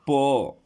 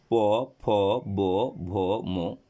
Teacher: ঠিক ঠোঁট দুটো স্পর্শ করতেই হবে, স্পর্শ না করলে প উচ্চারণ করা যাবেই না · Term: ওষ্ঠ